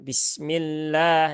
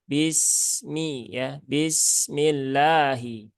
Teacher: Sin punya sifat rakhaah